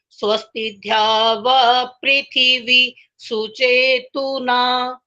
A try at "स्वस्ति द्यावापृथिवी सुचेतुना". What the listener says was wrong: जो स्वस्ति ध्यावा बोला है वो गलत हो गया, बाकी ठीक है।